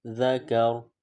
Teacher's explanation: ذکا، را زبر را، ذکر، وقفا ذکر. وقف میں را پر جو حرکت ہے وہ ختم ہو جائے گی اور را سائلنٹ پڑھیں گے.